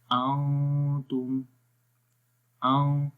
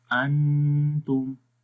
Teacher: اخفا اور غننے میں تھوڑا سا فرق یہ ہے کہ غننے کے اندر آواز کلیئر ہوتی ہے اور اخفا میں آواز جو ہے وہ ہائیڈ ہوتی ہے. ٹھیک ہے، لائک نون کی آواز کو ہائیڈ کرتے ہیں، چھپا کر پڑھتے ہیں، اور غننے میں کلیئر تو پڑھیں گے، لیکن اسٹل آواز ناک میں رہے گی